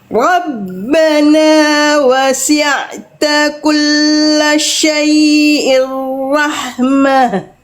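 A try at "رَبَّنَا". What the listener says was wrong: Ini masih agak nuansa Eropa, yang ini Eropa, jangan Rabbana tapi ro. Rabbana, ro.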